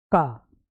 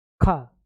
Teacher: का में बोलने में समय कम लगता है, खा में ज्यादा लगता है। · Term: अल्प प्राण